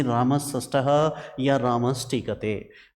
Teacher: दंत्य वर्ण के पास में यदि मूर्धन्य बैठे हुए हों तो दंती मूर्धन्य में चेंज हो जाते हैं। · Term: सटुत्व